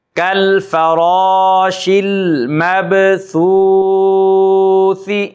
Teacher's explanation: با حروف قلقلہ میں سے ہے اور ساکن ہے، تو اس لیے یہاں پر قلقلہ یعنی با کو ظاہر کر کے پڑھا جا رہا ہے